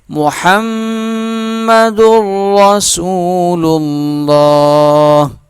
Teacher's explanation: میم جو ہے تشدید ہے، اس کے اوپر غنہ کیا جائے گا، را موٹا پڑھا جائے گا